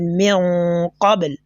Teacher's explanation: The nasalization here is known as ikhfa